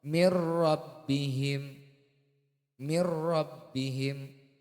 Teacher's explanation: hukum bacaan ee disebut idgham bila ghunah apabila nun sukun atau tanwin itu bertemu dengan huruf lam dan ro